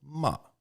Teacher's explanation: the fourth tone is falling